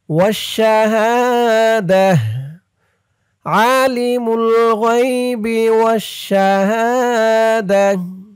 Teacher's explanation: কারণ এই জিম চিহ্নতে আমরা অক্ফ করেছি। অক্ফ করার সময় যদি গুল তা থাকে, সেই গুল তাটা হা হয়ে যায়।